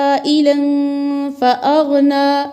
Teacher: आइलन के अंदर मद्द मुत्तसिल है इसलिए कि हरफ मद के बाद हमज़ा उसी कलमे में आ रही है